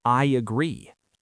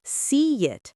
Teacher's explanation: Take the phrase I agree. If you say it fast, your mouth naturally produces a Y. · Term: J sound